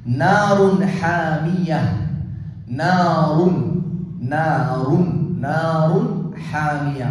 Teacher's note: ஹா காற்று வெளியே வர்ற மாதிரி தொண்டையிலிருந்து வரக்கூடிய எழுத்து